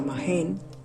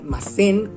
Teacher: un sonido glotal fricativo sordo sustituya a un sonido alveolar fricativo sordo. Como en el caso de las negativas de los verbos en la forma formal, masen, que cambia a mahen.